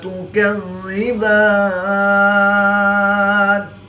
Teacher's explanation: وقف کی حالت میں با کے اوپر کھڑی زبر ہے، کھڑی زبر کے بعد نون کی زیر کو ساکن کر دیں گے تو یہاں پر مد عارض ہوگی، 2 سے 3 الف تک کھینچ کر پڑھیں گے